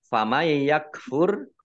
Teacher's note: nun sukun bertemu dengan huruf ya, bacaan idgham bi gunnah masuk dengan mendengung